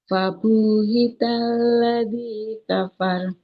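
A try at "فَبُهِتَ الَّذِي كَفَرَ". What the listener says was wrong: Nah, fabu banyak nggak boleh panjang. mbaknya domah. Nah, di depannya tidak ada waw. Nggak boleh kita panjangkan. Fabuhita.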